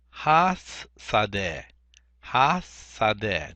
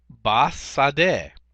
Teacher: the hey drops out, and the preposition takes its place. But we retain the vocalization of the vowel, the patak, and the dagesh forte. So it would be bas sadeh.